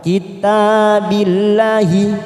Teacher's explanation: kitabillahi kita baca tipis karena didahuli kasr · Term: lam jalalah